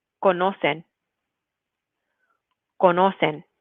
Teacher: Make sure that you're putting that emphasis on the second to last syllable. So not conocen, but conocen.